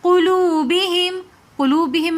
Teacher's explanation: قلوبہم میں بھی واو مدہ ہے اس لیے ہم نے اس کو ایک الف کی مقدار کھینچ کر پڑھا